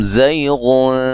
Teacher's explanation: زا کو زور سے ادا کریں گے، سیٹی سے ادا کریں گے